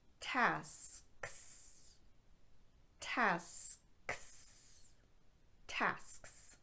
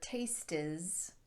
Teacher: make sure that you're not adding a vowel sound in between that final ts or the final ks